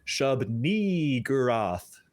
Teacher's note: You really got to hit and extend that second syllable, and it needs to have an E sound.